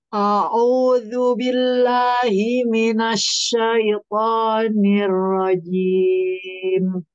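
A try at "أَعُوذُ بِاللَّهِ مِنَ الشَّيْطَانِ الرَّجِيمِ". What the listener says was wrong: Jangan tertukar antara hamzah dengan ain. Yang pertama itu hamzah, yang kedua ain. A'udzu. Baik, coba di to, to, to. Tebalkan lagi. Seben- Sebentar, suara Ibu masih di depan. To itu suaranya jangan di sini, tapi di dalam sini nih, dalam sini. To, to, to.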